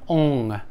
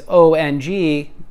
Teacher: you create a vibration up in your sinus when you make this sound so the sound essentially comes out the nose